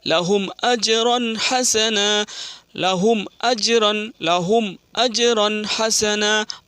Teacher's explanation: میم ساکن کو بغیر گنہ کے ساتھ جلدی پڑھا جاتا ہے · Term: اظہار شفوی